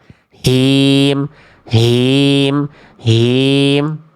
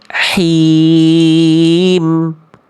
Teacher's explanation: Jadi karakter H kecil itu lembut, berbisik, clean, tidak berat kayak H besar